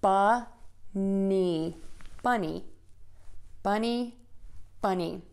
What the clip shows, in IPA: bʌni